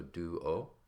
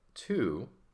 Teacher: the teeth in the same way that the D is except the D is just voiced with your vocal cords and the t is voiceless with no vocal cords